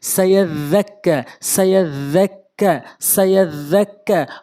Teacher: সিন জবর সা, ইয়া জাল জবর ইয়াদ। উচ্চারণ, জালের উচ্চারণ অবশ্যই এভাবে করবেন, জিব্বার আগা এবং দাঁতের আগা থেকে।